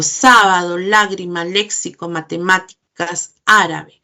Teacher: La mayor fuerza de voz, ya saben, está en la antepenúltima. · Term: palabras esdrújulas